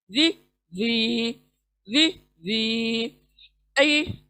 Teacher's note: जी जबान को बाहर निकालें और सामने के दांतों को लगाते हुए अदा करें। जी। देखिए गले के बीच में उंगली रखें और फिर इसको अदा करने की कोशिश करें।